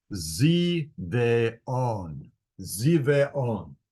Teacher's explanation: you just pronounce every vowel separately.